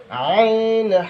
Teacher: দুই নাম্বার মাখরাজ হলকের মধ্যখান হইতে